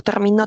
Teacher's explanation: la mayor fuerza de voz que está en la última obviamente va a cambiar el significado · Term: acento